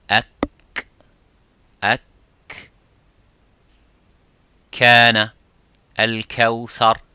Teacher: the kaf touches the roof of the mouth a little bit, touches the bone of the roof of the mouth